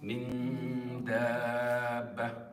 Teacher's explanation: where was the emphasis? On the noon because it's an ikhfa